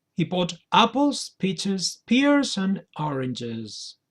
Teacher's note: it goes down at the end of the list. You are just saying the listener that you have just finished your list of fruits.